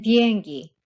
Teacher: The three P sounds, lax B as in 비행기, which is very slightly aspirated